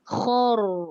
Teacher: Dia tak boleh sengih. Dia kena tebal juga ra mengikut pada kha baris atas.